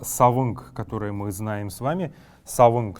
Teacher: Если же слово оканчивается на букву «н», например, слово «савынг», которое мы знаем с вами, «савынг», то здесь будет, так как буква «н», она не совсем полноценна в калмыцком языке и является сочетанием «н» и «г», «н», поэтому савынг здесь, для того, чтобы уточнить, что этот звук такой, мы будем добавлять вот такой вот согласный г.